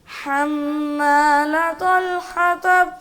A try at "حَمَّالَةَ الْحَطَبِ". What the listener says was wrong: تا باریک ہے, طول نہیں ہے. حمالة الحطب.